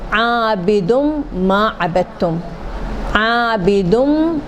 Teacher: ادغام جو ہے کہ جب یرملون کا حرف آئے تو نون والا یرملون کا حرف بنے گا، جیسے عابدم ما عبدتم، عابدم، تو نون نہیں بولیں گے، نون کو یرملون کا حرف بنا دیں گے